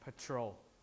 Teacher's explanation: There's less aspiration in P, almost as if there's no aspiration at all. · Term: unaspirated P